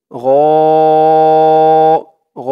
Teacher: গ গ 4 আলিফ টান, মধ্যে মুত্তাসিল